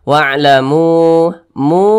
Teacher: mu dibaca panjang ini namanya adalah Mad Jaiz munfasil